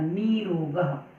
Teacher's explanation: र के बाद र हो तो र का लोप हो जाता है और पहला स्वर दीर्घ हो जाता है। जैसे निर प्लस रोगा, तो र के बाद र आया है तो र का लोप हो जाएगा और पहला स्वर दीर्घ हो जाएगा, तो निर प्लस रोगा मिलकर बनेगा नीरोगा।